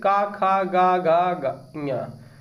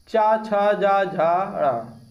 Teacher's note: आगे वाले 2 जो व्यंजन होते हैं अघोष होते हैं प्रत्येक चरण में